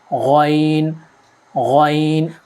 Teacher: یہ حلق کے اوپر والے حصے سے نکلتا ہے جیسے خا، اسے بھی موٹا پڑھا جاتا ہے۔